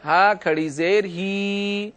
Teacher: اس ہا کو ایک الف کے برابر کھینچ کر پڑھیں گے۔